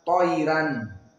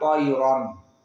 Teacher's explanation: Dan begitupun di sini Toira ya sakinah. Maka kaidah di dalam Wars madhkura toira ro muraqqaqah jika sebelumnya sakinah meskipun dia fathah. Berbeda dengan kaidah di dalam Hafs an Asim dan yang lainnya.